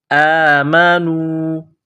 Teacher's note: کڑا زبر ہے، ایک الف کے لمٹ میں کھینچنا ہے